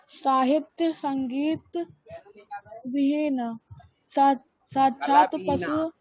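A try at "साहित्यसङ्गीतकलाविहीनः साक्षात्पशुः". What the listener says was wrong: कला भी है बेटा,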